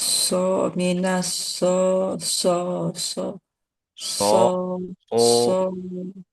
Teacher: suaranya lebih dibulatkan lagi Bu ke o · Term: huruf shad